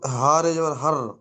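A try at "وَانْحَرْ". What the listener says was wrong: হার রে বলছেন কেন জি? হার রে ওটা, একটু দেখে পড়েন। হার বললে হবে না, হার বানানটা বলেন, ও তো বলছেন রিডিংটা টানাটা বলছেন। হ্যাঁ, দুটো এক করেন।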